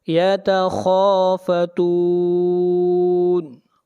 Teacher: خا حروف مستعلیہ میں سے ہے، خا کو موٹا پڑھا جائے گا، اور یہاں پر مد عارض وقفی ہوگی۔